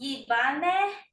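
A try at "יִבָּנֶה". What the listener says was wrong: Yeah, you did it good.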